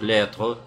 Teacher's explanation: И «lettre», ну, ты либо добавляешь «шва» на конце, да, эту коротенькую гласную «lettre», это на юге Франции обычно, как бы, там певучий очень акцент у них. Они читают вот эту немую «э» на конце, немую «э».